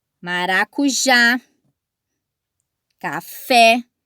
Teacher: porque a sílaba tônica está por último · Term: oxítona